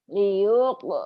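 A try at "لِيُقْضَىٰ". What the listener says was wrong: loh liuk liuk jangan panjang. Liuk do. Hati-hati. Liyuqda ajalum musamma.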